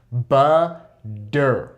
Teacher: when we say that double D sound, we have the tongue go up and hit what is called the alveolar ridge. That is simply that little bump at the top of your mouth, okay?